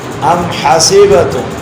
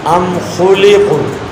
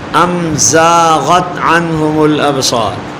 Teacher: میم ساکن بھی اظہار کریں گے، کوئی ادغام، کوئی غنہ وغیرہ نہیں